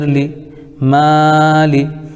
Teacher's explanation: زیر کو جلدی پڑھیں، تھوڑا بھی نہ کھینچیں۔ معروف پڑھیں، مجہول آواز سے بچیں، زیر کی آواز نیچے کو جاتی ہے